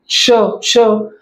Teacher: श चा उच्चार जेव्हा आपण करतो तेव्हा जिभेच्या मागे लागत आहे आणि टाळूला लागत आहे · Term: दंत तालव्य